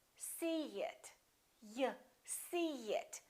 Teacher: in this case we put a little y a little ye sound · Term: linking vowel to vowel